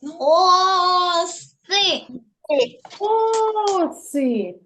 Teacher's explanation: наголос падає на О